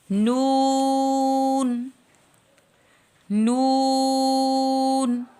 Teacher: زبان کا سامنے والا حصہ 3 دانتوں کے مسوڑوں سے یعنی اندر کی طرف لگے تو ادا ہوتا ہے.